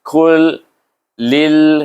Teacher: Kul, iaitu idgham, masukkan lam pertama kita tak baca, terus baca kepada lam yang kedua, ditasydidkan huruf kaf itu kepada huruf lam. Kul lil, lam ni bertasydid dengan lam, jadi bunyinya lil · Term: idgham mutamatsilain